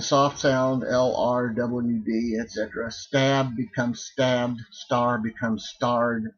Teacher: you're going to pronounce that d as a voiced D